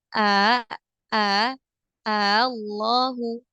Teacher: Akan tetapi ini juga berlaku di ayat ini atau di hukum mad farqi yaitu tashil itu kita mengucapkan hamzah lebih condong ke makhraj huruf mad ya jadi hamzahnya itu dibaca tidak hamzah, tidak juga huruf mad, tapi lebih condong ke huruf mad. Nah, dibacanya nanti jadi 2 harokat, bukan 6 harokat lagi.